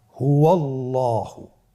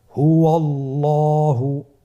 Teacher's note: আল্লাহ শব্দের দ্বিতীয় লামের আগেই আপনার জবর এসেছে, তাহলে আল্লাহ শব্দের দ্বিতীয় লামটিকে পোর করে পড়তে হবে